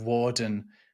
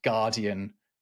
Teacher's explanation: the w sounds in Norman French are not in the Angevin French, and the one that the Plantagenets are speaking. They become these g sounds that we're used to.